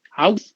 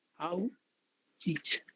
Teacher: That is one is both are alveolar. One is voiceless, another is voiced. Both are fricative.